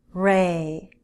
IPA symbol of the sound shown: r